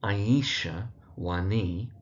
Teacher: the emphasis really on the knee part of the surname